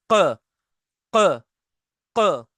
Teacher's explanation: जहां से beginning of the throat है हमारी, बस उसी किनारे पर, उधर ही से निकलेगा क, क, ये आवाज आएगी, क, क, क, ठीक है ना। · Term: कॉफ